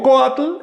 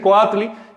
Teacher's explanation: Si digo coatl, el acento recae sobre la O. Pero si le añado esa I del sufijo tli, tendría que decir coatli y el acento se traslada y entonces aumenta una sílaba la palabra